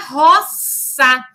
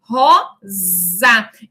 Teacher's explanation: Então, por exemplo, em rosa, como nós pronunciamos hoje com o som do Z, em latim era roça, que na passagem para o português, ele passa a ser pronunciado com o som do Z